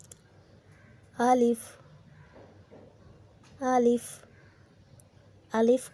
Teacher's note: الف کو جلدی پڑھنا ہے، کھینچنا نہیں ہے